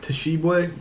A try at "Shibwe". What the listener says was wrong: No, just Shibwe. The T is silent.